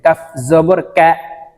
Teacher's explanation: জিহ্বার গোড়া থেকে একটু আগে বাড়িয়ে উচ্চারণ করতে হবে